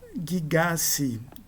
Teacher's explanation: O si provoca a queda da dental, do tal, provoca a queda da nasal, do nu